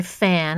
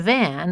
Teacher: the difference between fan and van is a phonetic difference in voicing